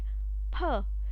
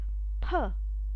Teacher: it's comes like per so when it is coming like per the vocal chords they are not vibrating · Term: unvoiced